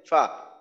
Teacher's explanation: নিচের ঠোঁটের পেট সামনের উপরের দুই দাঁতের আগার সঙ্গে লাগাইয়ে উচ্চারিত হয়